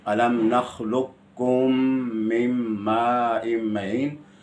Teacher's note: قاف، قاف کا ادغام صرف ایک جگہ الم نخلقکم میں ہے، وہاں ادغام بھی ہے اور اظہار بھی ہے متقاربین میں. قاف کا کاف میں ادغام تام اولا ہے اس لیے کہ آسان ہے.